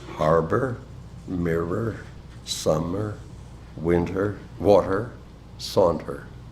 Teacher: a sequence of no less than five two syllable trochaic words